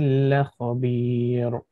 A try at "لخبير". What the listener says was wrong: لخبير. No, make the kha heavy. لخبير and ra will be light.